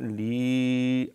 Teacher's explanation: یا ساکن ہے پہلے، لام کے نیچے زیر ہے، تو یہاں مد ہوگی۔